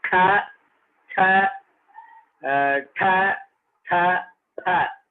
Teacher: सन्ति वर्गाणां द्वितीयानां तेषां विवाराः श्वासाः घोषाः तर्हि वर्गाणां ये द्वितीयाः तेषां विवारः श्वासः अघोषः महाप्राणश्च प्रयत्नः